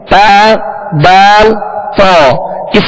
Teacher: जबान की नोक और ऊपर के दांतों की जड़ जबान की नोक और ऊपर के दांतों की जड़ इससे ता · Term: मखर